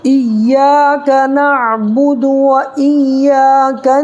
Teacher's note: یہاں دیکھیے الف ہے، الف جس سے پہلے یا کے اوپر زبر ہے، تو الف جس سے پہلے زبر ہو تو الف مدہ ہوگا. الف مدہ کو ایک الف کے برابر کھینچ کر کے پڑھیں گے